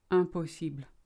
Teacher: It's very light L on the end.